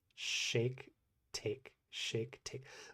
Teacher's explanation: when you look at an English sha notice that there's no like curling of the tongue and that it's barely further back than like when I said I put where do I put my tongue when I say take shake take shake take.